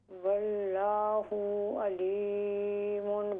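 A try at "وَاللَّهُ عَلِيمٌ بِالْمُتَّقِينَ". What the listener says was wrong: वल्लाहु अलीमुम बिल मुत्तकीन। वल्लाहु लंबा करे लफ्ज़ अल्लाह का, अलीमुम,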